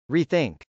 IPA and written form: riθˈɪŋk (rethink)